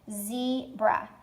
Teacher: Z is the accented part, and then bra is the unaccented part.